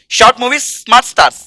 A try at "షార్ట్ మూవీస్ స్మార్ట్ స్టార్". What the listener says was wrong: స్టార్స్ కాదు, స్టార్.